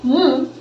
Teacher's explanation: the air is released through the nose and not the mouth so if I say m and I pinch my nose see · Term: nasal